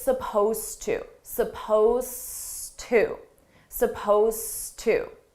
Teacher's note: it's spelled with an Ed. It's an Ed verb, but you don't hear it at all.